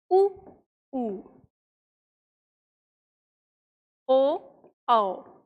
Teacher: उन्हें वृत्त मुखी स्वर कहते हैं। जिन स्वरों के उच्चारण में होठ गोलाकार होते हैं उन्हें वृत्त मुखी स्वर कहते हैं।